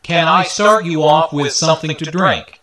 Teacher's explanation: Since this is a yes-no question, the intonation rises at the end.